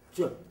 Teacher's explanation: moi mon tche, il est plus pré-palatal, disons que vraiment palatal, alors que les phonéticiens et les phonologues le décryptent comme palatal.